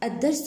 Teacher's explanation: الدرس بعد الأل أتى حرف مشدد، لام شمسية تكتب ولا تلفظ